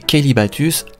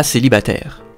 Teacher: le son k d'origine se sera remplacé par le son s faisant passer kelbatus à célibataire cela pourrait cependant s'expliquer par un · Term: palatalisation